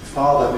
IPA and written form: ˈfɑːðə (father)